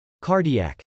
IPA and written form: kˈɑrdi.æk (cardiac)